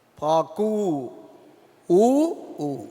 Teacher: பாக்கு என்று சொல்லும் பொழுது நெடில் பிறகு குரில் வருகின்றது